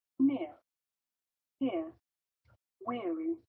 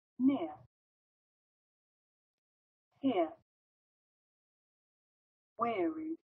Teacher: 这是这个双元音的情况。所以说，先是从这个▁e，然后滑向这个▁ear